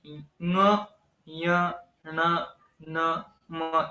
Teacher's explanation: इन सब में नासा का भी प्रयोग होता है नासिका से भी हम उच्चारण करते हैं तो इन्हें अनुनासिक कहते हैं उनका उच्चारण उसी पद्धति से होना